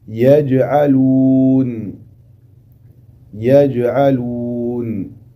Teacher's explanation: À l'inverse, ici dans ce mot, où il y a la lettre jim, qui est sakina, à l'intérieur du mot, tu feras le qalqala, min qalqala sughra.